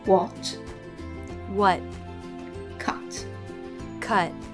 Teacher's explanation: in American English, they tend to drop the T in the final position